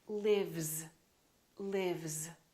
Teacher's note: Therefore, this S is also going to be a voiced sound, which is a Z, lives, lives.